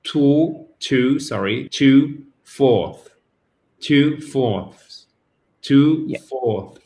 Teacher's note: vous avez le TH et en plus le S à la suite qui se prononce